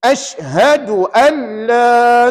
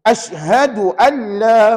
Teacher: Kena baca dengan masukkan kalimah nun mati ni ke dalam huruf lam dan dibaca tanpa dengung. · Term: idgham bila gunah